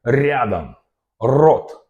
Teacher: our tongue go up and down, up and down, up and down, creating this flap movement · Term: flap sound